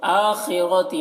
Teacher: خا کو پر پڑھیں گے، خا حروف مستعلیہ میں سے ہے، را کو بھی پر پڑھیں گے، را کے اوپر زبر ہے.